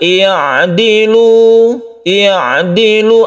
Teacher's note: kalau ditekan kan beginidilu itu belum betul yang betul ya'dilu ya'dilu ada bekas ainnya di situ ya makhraj ainnya sifat ainnya itu masih ada yaitu tawasud jadi ini